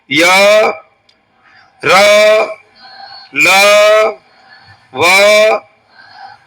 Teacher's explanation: જીભ ઉચ્ચારણ કરે પણ વધારે ન અડકે, હલકું અડકે અને હવા નીકળી જાય. સામાન્ય અડકે. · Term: ઈષદ સ્પુષ્ટ